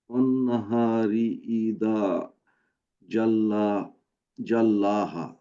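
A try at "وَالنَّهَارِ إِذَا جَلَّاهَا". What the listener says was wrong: Good.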